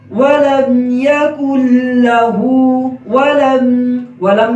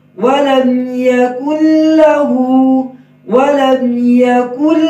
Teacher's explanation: آگے ہے ولم یکن لہ، ولم میں ہونٹ، واو میں ہونٹ گول ہوں گے، لام کے ساتھ جو میم مل رہا ہے میم میں آواز جاری رہے گی